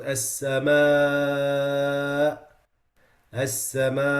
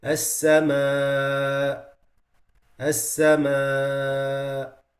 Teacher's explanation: And number 3 is weakening its sound when stopping. When stopping at it, if you don't make the hamza clear, it disappears.